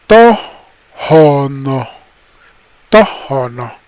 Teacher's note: Now the other thing about O'otam, the O'otam language is when you hear words, you're going to hear that the first syllable, the first part, most of the time is a little bit louder than the second, the rest of the word